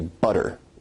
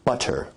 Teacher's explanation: your tongue is producing a tap sound there rather than a full stop or plosive sound.